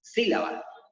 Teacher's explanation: Cuando la separo, fíjense que la sílaba tónica se encuentra en la sílaba sí y sí se encuentra en la antepenúltima sílaba